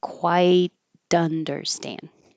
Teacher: Didn't quite And I put this T here with a little mark because you're going to not release the T.